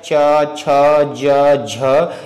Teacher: तालव्य से च वर्ग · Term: तालव्य ध्वनियां